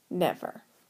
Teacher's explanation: we're going to say it emphasizing the first syllable like this never